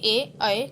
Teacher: कंठ तालवे कंठ और तालु से बोले जाते हैं